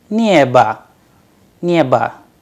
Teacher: That is why the pronunciation of the word neba comes like neba, as if the last vowel is a, not o